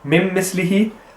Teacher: we are going to just join the two memes together and the noon will become completely silent